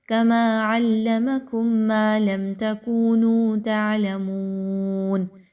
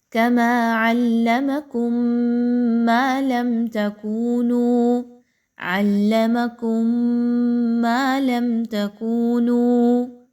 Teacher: ایک میم کی آواز کو دوسرے میم کی آواز میں ملائیے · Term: ادغام شفوی